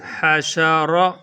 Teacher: را کے اوپر اگر پیش ہو پھر بھی اس کو پر پڑھتے ہیں، موٹا کر کے پڑھتے ہیں